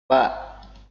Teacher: ini dikeluarkan dengan cara merapatkan kedua bibir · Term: makhraj syafawi